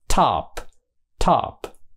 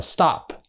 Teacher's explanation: ở top thì nó thổi ra